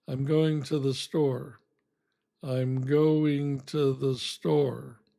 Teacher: But in a sentence, I don't say to most of the time. I say ta.